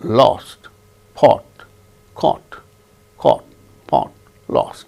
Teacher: then elongated o in english we don't have o lip rounding there is no lip rounding when we utter o sound so that is a symbol of the sound o without lip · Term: o without lip rounding, short O